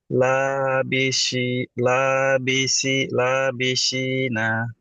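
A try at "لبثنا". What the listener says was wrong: সা বলে যেটা জানি সেটা হচ্ছে সিন। এটা কি সিন? হ্যাঁ, লাবিথিনা।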